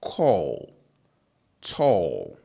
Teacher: in these words and a lot of English words that have this particular sound, the o is stretched, so it's long. It's a long o.